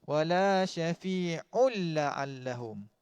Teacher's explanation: Idgham bila gunnah. Masukkan tanpa dengung.